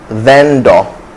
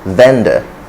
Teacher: the correct pronunciation is vendor with a schwa